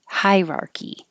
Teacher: you can skip the uh and say hierarchy